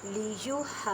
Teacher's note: الف سے پہلے زبر ہے، الف مدہ کا قاعدہ بڑی مد ہے، 5 الف کی مقدار میں کھینچ کر پڑھیں۔ اب یہاں پہ واو مدہ کا کریں اور میم ساکن کے بعد با ہے، تو یہاں پہ اخفاء شفوی کا قاعدہ کریں گے، مینس کے گنہ کرنا ہے۔